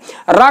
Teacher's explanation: जैसे आप समझें, रा का उच्चारण करें, आप रा कहें, रा कहते हैं तो हल्का सा जिह्वा में स्पंदन के साथ साथ घर्षण तेज होता है, लुढ़कना। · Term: लुंठित